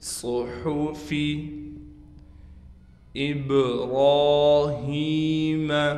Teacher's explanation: با پر قلقلہ کیا جائے گا، را کو موٹا کر کے پڑھیں گے اور را پر کڑا زبر ہونے کی وجہ سے را کو کھینچیں گے بھی ایک الف کی مقدار، ابراہیم۔